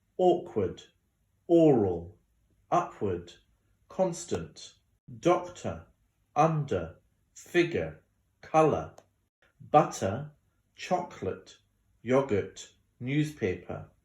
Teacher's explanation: schwa on the second syllable